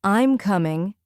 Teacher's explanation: But when we make a statement like, I'm coming, it goes down.